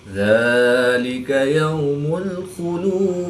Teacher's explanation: ذال کے اوپر کھڑی زبر ہے تو اس کو ایک الف یعنی 2 حرکات کے برابر کھینچ کر پڑھیں گے